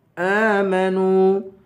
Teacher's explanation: نون کو واو سے ملا کر واو کو بھی ایک الف کے برابر کھینچیں گے